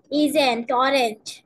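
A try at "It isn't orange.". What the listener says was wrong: কিন্তু নটটা কিন্তু ভালো হচ্ছে না। It isn't, আমার সাথে বলো, isn't, isn't, isn't, isn't.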